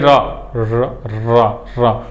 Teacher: र जब बोलने जाएंगे तो बोलने से पहले ही जीभ में एक कंपन सा होगा, कंपन सा होगा और जीभ क्या हो जाएगी, लुंठित मतलब मुड़ उड़ जाएगी। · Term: प्रकंपित व्यंजन